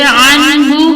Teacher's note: نون ساکن کے بعد حروف ہلکی میں سے ہا ہے، تو یہاں پر اظہار کا قاعدہ ہوگا اور اسے واضح کر کے پڑھیں گے